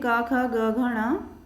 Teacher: इनका उच्चारण स्थान कंठ होता है क्योंकि इनकी आवाज़ गले से आती है। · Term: क वर्ग